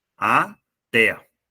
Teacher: 2 sílabas, sendo a última mais forte, o que faz com que a gente a caracterize como uma oxítona terminada em E.